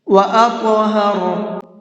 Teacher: طا کو منہ بھر کے بھی پڑھیں گے، اور اس طا کے اندر قلقلہ بھی کریں گے